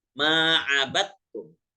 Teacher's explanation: Dal sama ta. Dibacanya nggak usah lagi menambahkan qalqalah pada huruf dal. tapi langsung ke ta. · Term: idgham mutajanisain